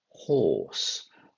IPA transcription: hɔːs